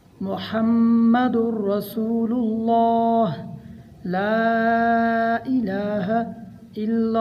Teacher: یہاں میم میں غنہ ہوگا اور غنہ کی مقدار 1 الف کے برابر ہے، یعنی ہم نے ناک میں پڑھنا ہے 1 الف کے برابر۔